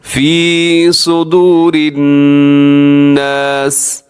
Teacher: صدور کا مطلب ہوتا ہے سینہ، اور صدور کا مطلب ہوتا ہے سین کے ساتھ پڑھیں تو اس کا مطلب ہوتا ہے بال لٹکانا، تو یہ بہت زیادہ معنی تبدیل ہو جاتے ہیں۔ صاد اپنی طرف سے پوری کوشش کر کے اس کو موٹا کر کے پڑھنا ہے